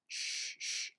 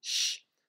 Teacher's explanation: it ends up being pronounced as a palatal alveolar consonant, sh, sh, as opposed to an alveolar palatal, sh.